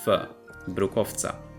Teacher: We see a voiced [w] followed by a voiceless [c]. The final consonant determines the voicing, so [w] changes to [f]